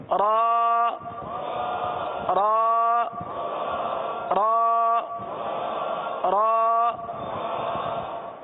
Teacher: زبان کی جو پشت ہے یہ تالو کو چھوتی ہوئی جائے گی اور را کے اندر تکرار پیدا ہوگی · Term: را کی ادائیگی